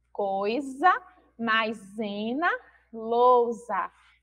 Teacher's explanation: a gente percebe aí que a letra S, ela tem esse som, esse fonema z entre vogais